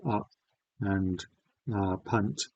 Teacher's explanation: mid back unrounded vowel. That's what I'm going to use to describe the vowel in words like up and punt and things like that. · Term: fun vowel